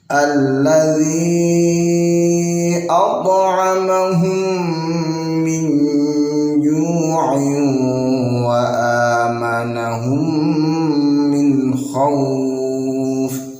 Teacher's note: Alladzi dibaca panjang 2,5 alif atau 5 harokat.